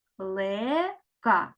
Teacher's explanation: куди падає наголос на другий склад